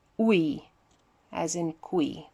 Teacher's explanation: This one starts with a oo sound and ends with a flat mouth.